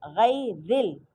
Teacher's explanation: لیکن یہاں پہ را کے نیچے زیر آ رہا ہے تو اس لیے یہاں پہ را کو باریک پڑھیں گے